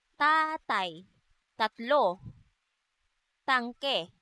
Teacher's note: Ang letrang T naman ay walang tunog na isinasaad sa paraan ng pasara at sa punto ng pangngipin.